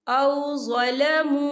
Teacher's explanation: वाव साकिन से पहले पेश है और इस पर छोटी सी मद भी है, तो हम इसे 4 हरकत के बराबर खींच के पढ़ेंगे।